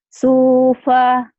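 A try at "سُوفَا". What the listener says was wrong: Ada haknya ya Bu dari tadi ya, supah. Seakan-akan di ujungnya ada kak. Supak, sufa, sufa. Seperti ada kaknya tapi nggak terbaca ya. Bukan sufah, sufa. Ya, seperti ada kaknya.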